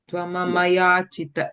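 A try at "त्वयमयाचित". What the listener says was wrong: No, you are saying Tvama. It's Tvayam. Ya is coming.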